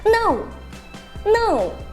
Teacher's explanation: Então, começa muito agudo e termina bem grave. E isso tem que ser rápido. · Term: quarto tom